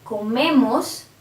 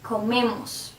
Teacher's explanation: If I say nosotros comemos, if you see, the stress is in me, the syllable before the ending